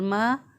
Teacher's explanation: मीम खड़ी ज़बर मा, दोनों होंठों को मिलाएं तो मीम अदा होगा। मीम खड़ी ज़बर मा, एक अलिफ के बराबर इसको लंबा करेंगे